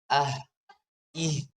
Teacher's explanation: Kalau ha walaupun dia sama tapi dia ee hames dan rakhawah dia. Jadi kalau kita sukunkan masih ah ih.